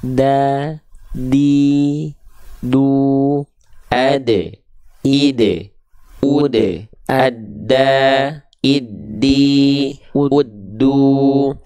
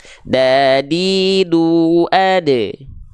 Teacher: Ujung lidah kita sentuhkan ke pangkal gigi seri atas kita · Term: huruf dal